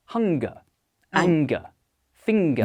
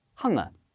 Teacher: the letters NG in German may not have that G sound. So a German speaker may pronounce hunger as hunger.